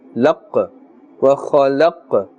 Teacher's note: Alright, as you can see the qaf which has the jazm, qaf is part of the huruf qalqala, and therefore we are bouncing or echoing the sound.